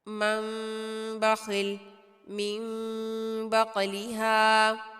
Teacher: نون ساکن کی آواز کو میم المخفی میں بدل کر ادا کیا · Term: اقلاب